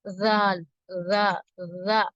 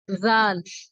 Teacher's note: நாவின் நுனி பகுதி மேல் நடுப்பற்களின் விளிம்பை தொட்டு விலகும் போது உண்டாகிறது. குரல் சற்று மெல்லியதாக இருக்க வேண்டும்.